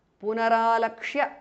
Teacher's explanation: Punaha, visarga changes to repha or r.